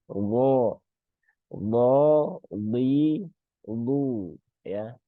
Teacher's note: Salah satu sifat yang menonjol di huruf bo itu adalah sifat isti'la ya dan sifat itbaq.